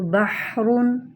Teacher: ہا کی آواز ہائے کی ہا کی طرح ہوتی ہے، اور ہا کی آواز درمیانی حلق سے رگڑ کھا کر نکلتی ہے